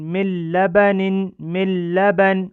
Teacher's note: جب لام آئے تو لام میں ادغام ہوگا، اور اس کو بغیر غنہ کے پڑھنا ہے، اور اس کو بلا غنہ اور ادغام تام بھی کہا جاتا ہے. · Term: ادغام بلا غنہ